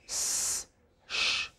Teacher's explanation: Vocal cords do not vibrate for both the sounds, for s, sh, no vibration.